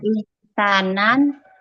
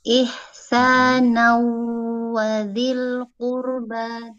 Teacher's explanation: Cara membacanya yaitu tanwinnya dileburkan ke dalam huruf waw. Huruf tanwinnya bukan ihsanan, tapi ihsanau. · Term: idgham bi gunnah